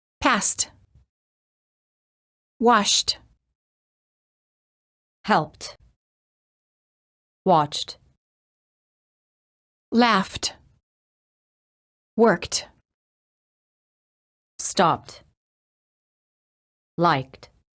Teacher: last letter of the word ends in a voiceless consonant the E is silent and the D is pronounced as t